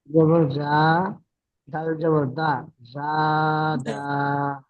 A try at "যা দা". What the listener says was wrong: আচ্ছা, দাটা টান দিয়েছেন, দাটা কেন টান দিয়েছেন? দাটা কি টান হবে? তাহলে দেখেন, টান না করে পড়েন। এক আলিফ বলা রয়েছে, এক আলিফ টানবেন না।